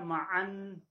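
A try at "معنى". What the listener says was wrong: Tasdidnya enggak ada.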